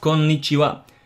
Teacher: That's too short. You have to try to lengthen the N's a little bit because there are two N's after each other right there.